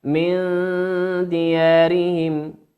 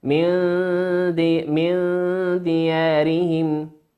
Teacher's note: أخفيت النون في قوله من ديارهم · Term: الإخفاء